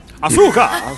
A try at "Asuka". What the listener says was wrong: The U is silent.